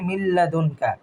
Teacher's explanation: মিলানোটা হবে কিন্তু গুন্নাটা হবে না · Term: ইদগাম উইদাউট গুন্না